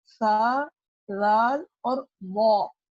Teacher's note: زبان کی نوک کو ثنایا علیہ کے کنارے سے ٹچ کرنا ہے، کہ زبان کی جو ٹپ ہوگی وہ ثنایا علیہ کی سائڈ کو ٹچ کرے گی، تو آپ کا حرف ادا ہوگا سا، زال اور وا۔